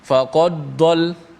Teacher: Dia seakan-akan bunyi idgham, bunyi dal tu dimasukkan ke dalam dad.